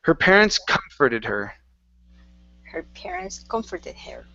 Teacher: we want to emphasize the come at the very beginning just a little bit more